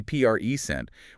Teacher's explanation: with the stress on the first syllable, it's a noun, a gift